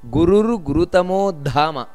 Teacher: ದ ಅನ್ನೋದು ಮಹಾಪ್ರಾಣ ಇದೆ ಹಾಗಂತ ಧಾಮ ಅಂತ ದೀರ್ಘ ಬರಬಾರದು ಅಲ್ಲಿ ಗುರುರ್ ಗುರುತಮೋ ಧಾಮ ಅಷ್ಟೇ ಬರಬೇಕು ಅಲ್ಲಿ ದೀರ್ಘ ಬರಬಾರದು ನಂತರ ಸತ್ಯ